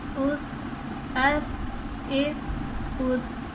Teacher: تا بغیر سیٹی اور بغیر سختی کے پڑھا جاتا ہے، بالکل نرمی کے ساتھ، اسی لیے اس میں سختی اور سیٹی نہیں آئے گی.